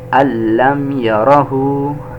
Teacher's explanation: not ghunnah and not making the sound of Noon